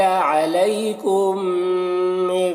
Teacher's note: کم یہاں پر یہ میم ساکن کے بعد میم ہے تو یہاں پر ادغام شفوی ہوگا، میم کو میم سے ملا کر غنہ کے ساتھ پڑھیں گے تو میم میں ادغام شفوی ہو رہا۔